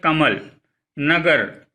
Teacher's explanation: इन शब्दों के दूसरे अक्षर क्रमशः म और ग पर अधिक बल दिया गया है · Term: बलाघात